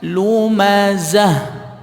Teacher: Ha yang keluarnya dari pangkal tenggorokan atau adnal halqi. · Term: bunyi ha